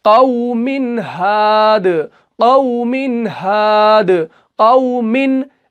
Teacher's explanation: तनवीन को कैसे पढ़ेंगे, पूरा पढ़ेंगे, जाहिर करके पढ़ेंगे। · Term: इजहार